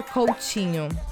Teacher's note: the T in Portuguese, especially in the south and southeast of Brazil, we pronounce like this, like chi. Instead of T, we say chi.